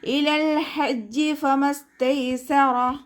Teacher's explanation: ലാം ഖൽഖല ലെറ്ററിലാത്തത് കൊണ്ട് ഹാഫ് സുക്കൂന് കൊടുക്കുക. ഹ എന്നുള്ള അക്ഷരത്തിൻ്റെ സൗണ്ടിനെ തൊണ്ടയുടെ മധ്യഭാഗത്തു നിന്ന് തന്നെ കൊണ്ടുവരിക. ഹ എന്നുള്ള അക്ഷരത്തിൻ്റെ സൗണ്ടായി പോകരുത് കേട്ടോ.